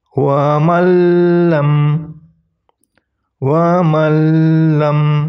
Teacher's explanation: Jadi nun mati dihilangkan, langsung dilebur, langsung menuju lam. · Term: idgham bila gunnah